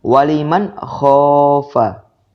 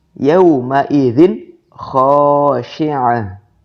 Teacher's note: Apabila nun sukun atau tanwin an-in-un itu bertemu dengan huruf kha, dibaca jelas atau izhar ya.